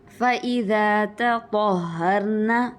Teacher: فإذا تطهرن دوبارہ سے تا اور طا میں فرق کیجئے. تا باریک ہوتا ہے, طا پر ہوتا ہے